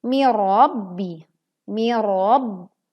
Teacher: leburkan huruf nun ke huruf ro tanpa disertai dengung. Mirabbi, mirab, dan tekan huruf ba bertasydid.